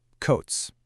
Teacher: The T sound is voiceless, so the ending has to be voiceless too. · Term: sharp TS